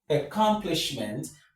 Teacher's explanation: The stress is on the third syllable from the end of the word.